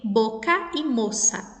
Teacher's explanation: o O com o mesmo som, né, aqui do O fechado